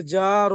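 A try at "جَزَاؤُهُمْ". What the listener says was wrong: ঠিক করে পড়েন। জিম জবর যা, তারপরে ওটা র আছে, রর উপরে নুক্তা আছে। যা জবর যা, যার পরে আলিফ আছে, তারপরে মাদ আছে, একসাথে বলতে হবে। যা, আলিফ, মাদ, জবর যা, যা যা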